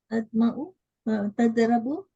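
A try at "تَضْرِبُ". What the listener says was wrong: Tadribu is a kasra. Why you are changing?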